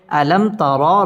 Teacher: আলাম তার, র পুর হবে, রর উপরে যদি জবর অথবা পেশ হয় ওই র পুর করে পড়তে হয়। পুর মানে হচ্ছে মোটা। আর যদি রর নিচে জের হয় তাহলে বারিক করে পড়তে হয়, পাতলা করে পড়তে হয়।